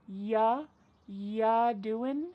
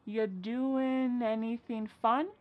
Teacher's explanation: Or ya doing? Ya doing, we're dropping that G again.